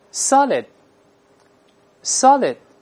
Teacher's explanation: 舌头不做动作能听到，在里面 solid， solid， 读快了之后失去爆破